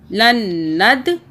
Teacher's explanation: نون کی 2 مرتبہ آواز تشدید کی وجہ سے